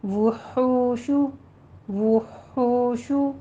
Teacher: ہا وسط حلق سے نکالتے ہوئے گول ہے، ضمہ ادا کیجیے، ہونٹوں کو گول کر لیں